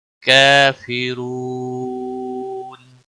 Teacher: کافرون، نون وقف کی صورت میں ساکن ہوگا تو یہاں پر مد العارض وقفی ہوگا۔ را کو موٹا پڑھیں گے، واو مدہ ہے اور حروف مد کے بعد جب ساکن حرف آتا ہے تو مد عارض وقفی ہوتا ہے، اس کی مقدار 3 سے 5 سیکنڈ کھینچ کر وقف کی صورت میں لمبا کرنا ہوتا ہے۔